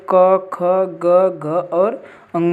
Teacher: क वर्ग के जितने भी वर्ण होते हैं उनका उच्चारण स्थान क्या होता है? तो भाई साहब याद रखिएगा, कंठ होता है